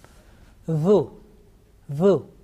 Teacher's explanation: Okay, this time we have picked dhal. So tip of tongue is touching the front upper teeth, you know, that edge, and you are pronouncing this one softly with thin sound.